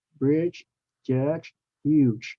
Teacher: They all have the ch sound at the end with a lot of air coming out.